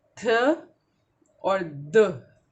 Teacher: tip of द tongue upper पैलेट को छू के पीछे आ जाती है